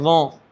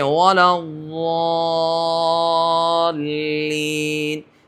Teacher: ذوں یہ بالکل بغیر وقت کا لفظ ہے، وقت نہیں لگتا اس کی ادائیگی میں، لیکن ضاد یہ لمبا مخرج ہے، جیسے ولضالین، یہ لمبا مخرج ہے۔